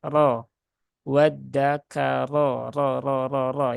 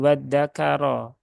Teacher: rnya fathah ya harakatnya berarti rnya dibaca dengan tebal ya · cara menebalkan RO sama ya yaitu dengan cara menaikkan pangkal lidah